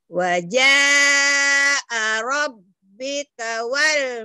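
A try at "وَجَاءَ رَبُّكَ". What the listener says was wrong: Kenapa jadi robika? Nggak tahu tandanya ya ini. Ini kan doma. Kenapa jadi robika? Robuka. Wajah rabbuka.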